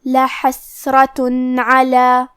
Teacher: عین حروف الاظہار میں سے ہے اور اظہار کا معنی ہے ظاہر کرنا، اور کیونکہ تنوین کی اصلیت نون ساکن ہے تو ہم یہاں تنوین ظاہر کریں گے اور اسے نون ساکن پڑھیں گے اور بغیر غنہ سے یہ حکم کو ادا کریں گے